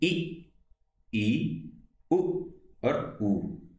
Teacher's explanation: समवृत वे स्वर होते हैं जिनके उच्चारण में मुंह लगभग बंद ही रहता है, पूरा बंद नहीं रहता है।